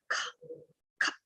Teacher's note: We have to do like we have to exhale forcefully and our stomach goes in and we just say kha, kha. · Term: jivva mulya